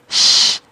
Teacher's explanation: dia dari tengah lidah, berarti kan tengah lidahnya naik ke langit-langit. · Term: huruf shin